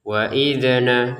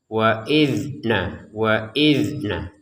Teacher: Di sini ada huruf dalal ya, ada huruf dalal sukun. Kita bacanya tidak usah menggunakan pantulan ya. Kalau ini dibaca dengan pantulan salah ya. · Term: tidak ada pantulan